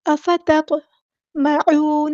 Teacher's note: افتطمعون، افا حمزہ کی آواز واضح ادا کرنی ہے، تا ہم نے باریک پڑھنا ہے اور تو ہم ہیوی لیٹر پورا ادا کرنا ہے، تو اس کو دھیان سے ادا کرنا ہے، اور تو ساکن ہے تو اس کو ہلائیں گے، قلقلہ ہوگا۔ افتطمعون، عین کو وسطی لیکن مڈل تھروٹ سے ادا کرنا ہے، واو مد آ گیا تو مد اصلی کریں گے، نون کے زبر کو لمبا نہیں کریں گے۔